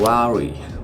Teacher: whenever I say the word very, it would sound like a wery, without the v sound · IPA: /v/ & /w/